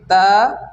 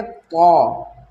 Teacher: طا heavy آواز سے پڑھا جاتا ہے کیونکہ طا حروف مستعلیہ ہے۔ حروف مستعلیہ کو پر پڑھتے ہیں، اور اس کی ہم نے ایک شارٹ ویڈیو بھی بنائی ہوئی ہے، آپ دیکھ سکتے ہیں۔